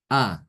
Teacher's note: Yang keduanya berharokat, ya, arti berharokat berarti bukan sukun, fathah fathah atau fathah dhammah fathah kasroh, ya, di dalam satu kata, dan hamzah yang pertama selalu dalam keadaan fathah dan dibaca dengan tahqiq, dibaca dengan jelas, bukan tashil. A, ya, dibaca dengan seperti biasa A.